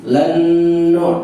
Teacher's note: nun mati ketemu dengan nun lan nu. Nah, itu idgham yang gunnah.